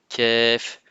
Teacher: La lettre Kef fait un son K simple et léger, comme dans kilomètre ou café